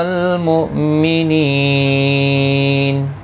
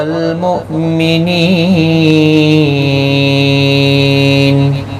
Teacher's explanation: حمزہ ساکن کو جھٹکے کے ساتھ ادا کیا جائے گا. نی یا مدہ ہے، ایک الف کی مقدار کے برابر کھینچ کر پڑھیں گے.